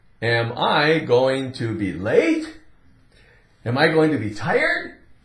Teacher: we're going to rise up a little bit on that last word we Elevate that pitch of our voice